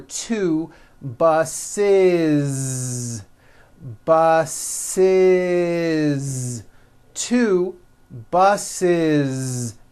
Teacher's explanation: the last sound you hear is that voiced Z